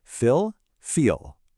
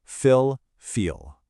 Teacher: Quick and relaxed, and then wide and held.